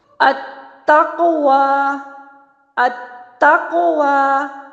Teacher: واؤ کی ادائیگی دیکھتے ہیں، واؤ، ہونٹوں کے گول ناتمام ملنے سے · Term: واؤ متحرکہ